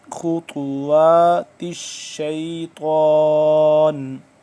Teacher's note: خا موٹا، طا بھی موٹا